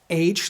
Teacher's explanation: or sound rather than having a CH or k sound he sounds more like an H with plenty of friction place the tongue near the top of your mouth and pronounce h like a cat hissing for this letter so